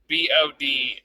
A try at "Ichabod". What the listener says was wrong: But I don't know where you found the K. I don't know where you found it. Ichabod.